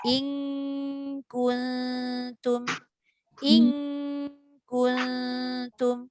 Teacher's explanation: kaf, pertemuan dia dekat belakang, pangkal lidah kan?